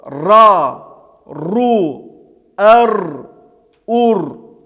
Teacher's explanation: Также скажем о том, что звук ра произносится твердо.